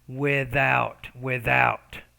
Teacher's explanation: you have to get the tongue in between the teeth then force the air and vibrate the vocal folds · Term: th sound